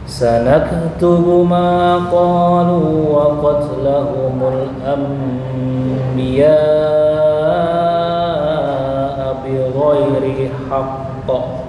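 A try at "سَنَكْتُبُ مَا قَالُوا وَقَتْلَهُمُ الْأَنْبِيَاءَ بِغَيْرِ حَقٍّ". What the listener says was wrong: Nah, tempo jeda agak lama dikit. Bi ghairi haqq. 2 detik. Bi ghairi haqqa. Yang pertama, setiap ada tasdid itu qalqalahnya kubra pakai tempo.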